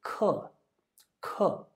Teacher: Another example from chapter 2 is the word for lesson, k. So again, this is the fourth tone, and the sound is very strong. It's pronounced very clearly